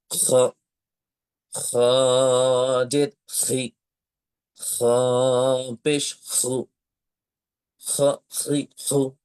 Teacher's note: খ অক্ষরটির মাখরাজ হচ্ছে কণ্ঠনালীর শেষ ভাগ হতে উচ্চারণ করতে হয়। এবং অবশ্যই এই খ উচ্চারণ করার সময় একটু খড়খড়ি রকমের আওয়াজ আপনাকে নিয়ে আসতে হবে।